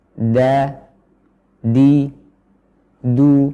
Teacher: organ pengucapannya yaitu ujung lidah bersama dengan pangkal gigi seri atas nah tanggal gigi seri atas ini bukan berarti gusi atau langit-langit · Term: huruf da